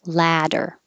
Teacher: this is ah, jaws very open and the lips are back.